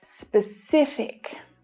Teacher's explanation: The stress is on the middle syllable here. And there are two things to pay attention to with this word.